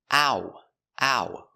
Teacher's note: Remember the sound is two sounds. It's a like apple and oo like boot together.